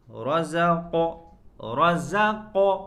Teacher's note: قاف کے اندر قلقلہ، آواز لوٹ کر آئے گی۔ رزق، را کے اوپر زبر ہے جس کی وجہ سے را کو پر کریں گے، زا کو صاف کریں، زا، رزقناہم، نون کے اوپر سکون ہے یعنی نون ساکن ہے، اور اس کے بعد لفظ فا ہے۔